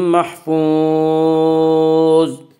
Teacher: محفوظ، آگے آیت ہے وقف کریں گے۔ زوا کو پر پڑھیں گے۔ زوا حروف مستعلیہ میں سے ہے۔